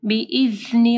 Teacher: جب آپ ذا پڑھیں گے تو آپ کی زبان کی نوک اوپر کے 2 دانتوں کے پاس آئے گی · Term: ذا کے مخرج